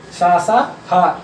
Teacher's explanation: ये आपके महाप्राण में आएंगे, क्योंकि इनको बोलने पर ज्यादा वायु निकल रही है